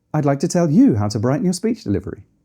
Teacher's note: If we pitch up, it's positive and hopeful.